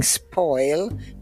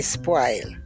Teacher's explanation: we do not use the rounded vowels in Jamaica they're all broad a vowels we instead of saying spoil we say spoil yeah but they're